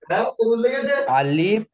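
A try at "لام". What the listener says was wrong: এটা আলিফ না, এটা হলো লাম। আলিফ যখন হবে তখন এরকম এরকম দাঁড়িয়ে হবে, কিন্তু এই টানটা, এই যে বেঁকাটা এই দিকে হবে, এই দিকে আসবে, ঠিক আছে। আর যখন লাম হবে তখন এর লামের বেঁকাটা এই দিকে আসবে। চলেন, এটা হলো লাম।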